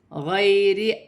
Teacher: یا ساکن سے پہلے زبر ہے تو یالین بنے گی، اسے کھینچا نہیں جائے گا · الف پر کھڑی زبر ہے، حمزہ بھی پڑھا جائے گا اور ایک الف کی مقدار کھینچ کر پڑھا جائے گا